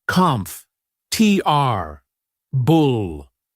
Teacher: The or sound gets compressed.